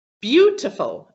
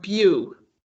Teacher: gets emphasized okay the one that is stronger than the others so the word stress falls on the first one bew